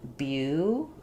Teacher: Yes, so we typically do in American English, and that's because when we have a T in the middle of words followed by an unstressed syllable, we don't typically say it as an aspirated T, true T. We use what's called a flap. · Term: flap T